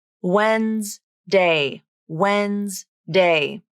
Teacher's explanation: both the d and the e have been dropped from the pronunciation in this word it's two syllables even though it looks like it should be three it's not